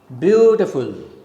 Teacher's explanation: Beau, the first syllable is stressed, it is a strong syllable. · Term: falling rhythm